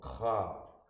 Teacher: This cha, you notice there's a guttural sound there, little guttural sound, cha.